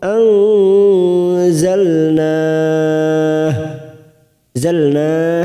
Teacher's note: nun sukun bertemu Zain ikhfa Hakiki kita semarkan tiga ketuk anzalna zalna karena kita wakaf di sini kita panjangkan empat harakat